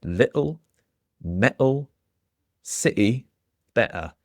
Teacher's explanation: It's officially called a glottal stop and the T's stop in your throat.